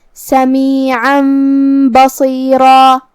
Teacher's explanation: با حروف الاقلاب میں سے ہے اور اقلاب کا معنی ہے بدل دینا تو ہم یہ تنوین کو میم میں بدل کے غنہ کے ساتھ یہ حکم کو ادا کریں گے